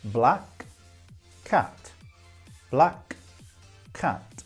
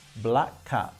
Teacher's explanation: So we have black cat, black cat. But when we say it together, we only pronounce one of the 2 consonant sounds.